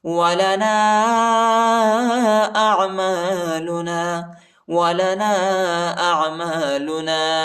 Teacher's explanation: نون کے بعد جو الف ہے اس کے اوپر چھوٹا مد ہے، اس کو تقریباً 2-3 سیکنڈ تک کھینچے گے